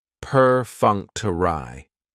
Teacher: stress is on that second syllable, that funk